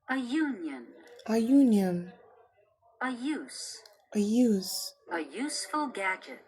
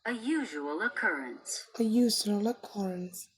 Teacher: pronounced u which actually begins with the consonant sound y